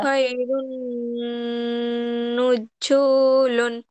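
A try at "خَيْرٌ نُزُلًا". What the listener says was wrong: নজু টান হয়ে যাচ্ছে কেন আপু?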